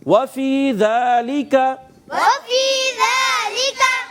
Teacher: واو کی ادائیگی ہونٹوں کی گولائی سے ادا ہوگا